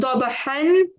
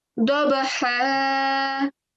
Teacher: rather than saying dabahan when we are pausing, we're going to end up saying dabaha